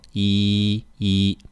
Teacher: when you're counting e stays the first tone